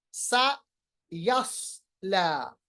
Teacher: सयस्ला, यहाँ पर फर्क करना है, सीन और स्वाद एक ही कलमे में है। सा यस्ला, स्वाद को पुर पढ़ेंगे, सीन को पुर नहीं पढ़ेंगे। अच्छा दोनों को तेज पढ़ेंगे।